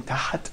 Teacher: when you say tahat, here you're putting a vowel, which probably called fatha. So you're making tahat.